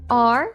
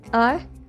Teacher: the strong form is a more open sound, while the weak form is a more closed sound. And in the weak form, all of them have the same schwa sound, the uh.